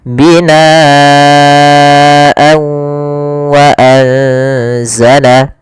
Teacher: Kalau di sini huruf setelahnya adalah huruf waw, maka tanwinnya kita masukkan kepada huruf waw kemudian ditahan gunnahnya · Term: idgham bi gunnah